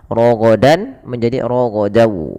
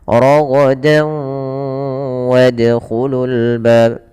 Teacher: Suara tanwinnya masuk ke huruf setelahnya. Kalau huruf setelahnya waw, maka masukkan tanwinnya ke waw dan ditahan dan dibunyikan dengan huruf waw. Suara nunnya hilang. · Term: idgham bi gunnah